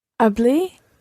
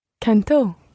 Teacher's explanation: You've got to put the stress on the last syllable